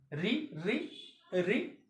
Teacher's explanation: जब बोलते हैं तो जीवा की नोक यानी मूर्धा जो है वो कंपन करती है, हालांकि स्पर्श नहीं करती है। तो जीवा की नोक से यानी आगे के हिस्से, जीवा के आगे हिस्से से बोलते हैं मूर्धन, मूर्धा।